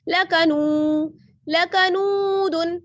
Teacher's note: नू को खींचना है क्योंकि इसमें वाव मद्दा है